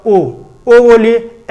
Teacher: ठीक, अर्ध समृत के अंदर अर्ध यानी आधा बंद रहता ओ बोलिए, ए बोलिए, यानी ओ और ए किसके अंदर आएगा, अर्ध समृत स्वर के अंदर आएगा